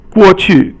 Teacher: 过 is fourth tone, and 去 is 轻 声.